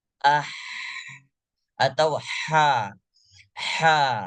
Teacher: huruf Ha ini pita suaranya paling besar terbuka di antara huruf yang lain